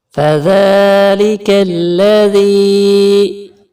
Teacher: یہاں ذال کو نرمی سے ادا کریں گے اور تھوڑا سا کھینچ کے بھی پڑھیں گے کیونکہ اس کے اوپر کھڑی زبر ہے، تو ہم نے کھڑی زبر والے کو کلر نہیں دیا چونکہ کھڑی زبر کو آپ نے یاد رکھنا ہے، یہ حرف مدہ کو جہاں پر کھینچنا ہے وہاں ہم نے کلر دیا ہے۔